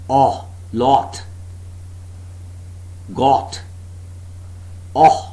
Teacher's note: The jaws are wide open and there is slight open lip rounding. Slight open lip rounding. · The back of the tongue is just below the half open position. No contact being made between the tongue and the upper molars.